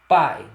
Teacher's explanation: ditongo decrescente, porque está indo da vogal, está sendo o encontro da vogal com a semivogal